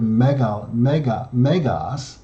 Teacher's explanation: mega this adjective big and great the adjective is always on the penultimate syllable that is the next to the last syllable carries the accent